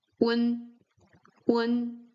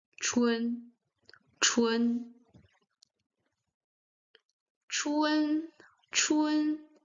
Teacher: Here the u comes shorter and it melts together with the n.